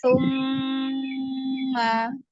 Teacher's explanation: gunnah musyaddadah karena ada mim bertasydid dibaca 2 harokat.